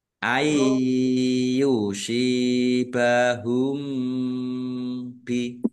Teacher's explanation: Nun sukun bertemu dengan huruf ya, bacaan idgham bi gunnah masuk dengan mendengung. Mendengung ya ditandai ya-nya ada tasdidnya, ya ditahan kira-kira 2 harokat biar tampak dengungannya.